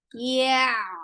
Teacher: Yeah is very soft letter. You are lifting up the tongue, but you are not touching the palate